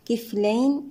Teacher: كفلين الياء ساكنة قبلها مفتوح حرف لين في حالة الوصل، أما في حالة الوقف مد لين يمد بمقدار حركتين أو 4 أو 6 حركات.